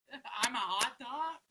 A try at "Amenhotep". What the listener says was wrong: Not hot top. That's the shit that's on the driveway.